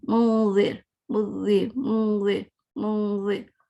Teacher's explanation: زبان میری زال پہ ہے آلموسٹ